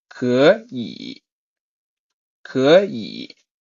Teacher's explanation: So to remove this, if two third tones combine, the first part becomes a second tone, and the second third tone is left the way it is.